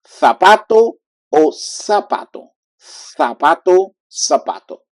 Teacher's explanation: all Latin America they will use more like a strong S